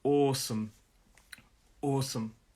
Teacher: The stress is on the first syllable. Awesome, it's an aw sound. So we hold that sound.